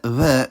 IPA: β̞